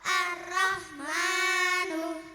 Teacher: sebuah lam tanpa harakat dianggap tidak ada